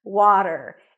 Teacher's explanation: A W sound, then the A as in father, wa, wa. Then a flat T and an R